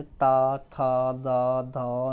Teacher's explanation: इनको बोलेंगे आप तो हमारे दांत को स्पर्श करेगी हमारी जीभ